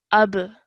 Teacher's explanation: And then over here, ending the surah, when you're joining the alif to the ba, you would produce the qalqala sound, or you would apply the qalqala rule, because ba is one of the qalqala letters. So ba has a sukoon, that is why when you join the alif to the ba, you have to produce that jerk sound